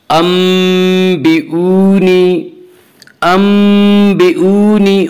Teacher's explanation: वाव मद्दा वो वाव जो साकिन हो उससे पहले पेश हो। वाव मद्दा को एक अलिफ के बराबर खींच कर पढ़ेंगे